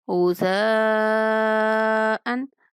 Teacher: مد کو 5 الف کے برابر لمبا کریں گے